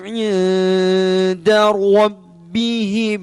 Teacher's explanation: Jaza kita perhatikan nun sukun bertemu dengan dal, samar-samar.